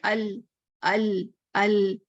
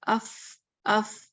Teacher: لام جو کہ ال ال ال ذرا زور سے آواز آتی ہے، جبکہ اس اف اف یہ کمزور آواز ہے، اف اف. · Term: جہر